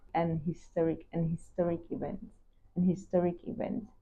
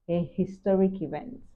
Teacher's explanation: In American English, a historic event, the H is pronounced, while in British English, an historic event. Now notice the H is softer or silent